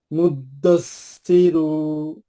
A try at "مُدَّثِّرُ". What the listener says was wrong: फिर क्या क्यों खींचे? पेश को क्यों खींचे? सिर्फ बस एक हरकत।